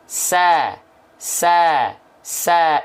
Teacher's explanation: karena dia huruf yang tipis maka dilafalkan ketika berharakat fathah sambil senyum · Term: Sin